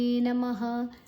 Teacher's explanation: ಮಾದ ಜೊತೆ ತಗೊಳ್ಳುವ ನೇ ದೀರ್ಘಾಕ್ಷರ ನಮಃ. ಮಾ ಆದ ನಂತರ ವಿಸರ್ಗದ ಉಚ್ಚಾರಣೆ ಹ